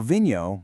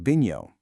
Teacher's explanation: if you go up north to Porto, you'll often hear the V sound pronounced more like a B, so vinho might sound like binho.